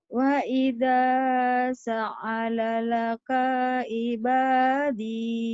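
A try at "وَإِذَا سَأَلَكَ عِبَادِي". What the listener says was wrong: Bukan salalaka, sa'alaka. Sa'alaka. Sa'alaka. Wa idza sa'alaka ibadi.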